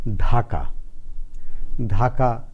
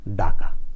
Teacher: ঢ মহাপ্রাণ ধ্বনি উচ্চারণ হয়ে যায় ডাকা · মহাপ্রাণ ধ্বনিগুলো স্বল্পপ্রাণ হয়ে যায়